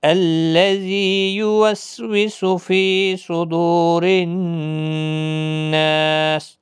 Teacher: را زیر کی وجہ سے باریک پڑھا جائے گا